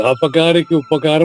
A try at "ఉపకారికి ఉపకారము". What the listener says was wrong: లేదు ప్రారంభ దోషం, ప్రారంభమే తప్పు. ఉపకారికి ఉపకారము ఉపకారికి ఉపకారము.